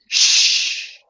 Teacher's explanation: there's no vibration there's just a sound like p or SH Shh it's just air coming out there's no actual sound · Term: unvoiced sound